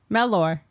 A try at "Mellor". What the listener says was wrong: Mella. Meller. But it's more of an E sound at on the E. but it's pronounced Meller. They don't say Mellor.